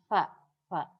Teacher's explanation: Suara fa itu min syafatis sufla, dari bibir bawah. Ini bibir bawah.